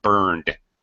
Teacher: net net and the n sound is is a voice sound so that's why we pronounce the ED past tense burned so we can just keep the voice sound going